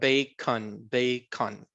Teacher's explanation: Casi ni se interpreta nada en ese sonido entre la C y la N